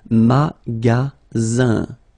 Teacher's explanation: And then the ending here is IN, so it's nasal, it goes in your nose, and it's un.